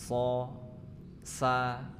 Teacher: Makhrajnya sama, yaitu ujung lidah menempel ke gigi seri bagian bawah yang dalam. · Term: huruf shad